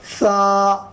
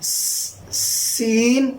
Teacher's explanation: سا کے اندر دونوں اوپر اور نیچے والے دانت نہیں ملتے سا کے اندر، اور سین کے اندر ملتے ہیں